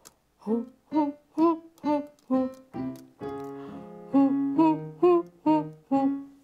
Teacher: nós vamos fazer um som de ru, ru, ru, como se tivesse um H com som de R na frente da vogal U. Ru, ru, ru, ru, ru.